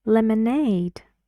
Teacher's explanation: And the stress goes on aid.